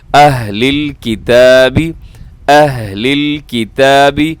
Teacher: اس میں ہا جو ہے جسے دو چشمے کہا جاتا ہے، یہ دو آنکھوں والا، یہ ہا سینے سے ادا ہوتا ہے، حلق سے ادا ہوتا ہے، لیکن حلق کا وہ حصہ جو سینے کی طرف ہوتا ہے وہاں سے ادا ہوتا ہے